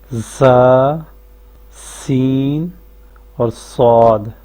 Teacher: زبان کی نوک جب سامنے والے نیچے دو دانتوں کے ساتھ لگے تو یہاں سے یہ تین حروف ادا ہوتے ہیں، زا، سین اور صاد۔ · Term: صفیری